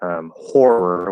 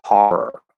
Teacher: If you don't have the unmerged, if you don't have the cot merger, then there's other things that happen. Like instead of saying horror with an or, like I say it, they'll say horror with that unmerged aw sound